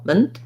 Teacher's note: If I had a little vowel, it would be an I or a schwa, mint or munt. But you want to go from the M to the N as quickly as you can with almost no vowel, mint. And then most words that end in T or NT, we tend to use a stop T. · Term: syllabic N